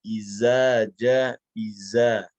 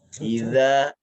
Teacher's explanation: huruf dzal ini dia sedikit digigit di gigi kita. Sedikit tergigit. Jangan disamakan dengan zai.